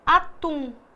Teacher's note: O mesmo acontece com atum. Atum, tum é mais forte, então aí nós temos a sílaba tônica, a sílaba mais forte. E A é a sílaba átona, a mais fraca.